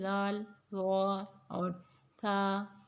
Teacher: جب زبان کی نوک ثنایا علیہ کی ٹپ سے لگتی ہے اس کے اندرونی کنارے سے، تو وہاں سے ذال، ضا اور تھا، یہ تینوں ادا ہوتے ہیں۔ تھا بھی بہت سافٹلی ادا ہوتا ہے۔